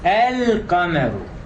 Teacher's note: The lam in the Arabic word, the moon, al-qamar, does not assimilate and it is pronounced clearly. · the definite article is pronounced as the way it is written, and there is no assimilation, no gemination. In this case, the letter lam will always carry a sukun.